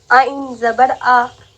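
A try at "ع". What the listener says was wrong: आइन ज़बर आ नहीं बोलना, सिर्फ आ बोलना है। आ,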